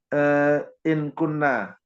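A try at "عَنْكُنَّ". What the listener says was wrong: Ankunna, Pak. Tidak ada in, Pak. Ankunna. Jadi memang kalau sudah di sini, betul Pak tadi, ini kan mati. Jadi kalau untuk apakah dia menjadi ini kan mati, nunnya juga mati, jadi harus dihidupkan satu. dikasih tasdid karena dia dari mati anni.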